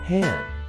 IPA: ˈhændl